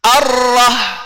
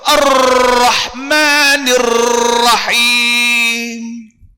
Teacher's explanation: Tapi kita di Malaysia yang menggunakan sifat huruf Ibnu Al-Jazari, ya, pendapat Imam Ibnu Al-Jazari, ra sifatnya bertakrir, bergetar. Oleh kerana dia bergetar, maka adanya tawasud.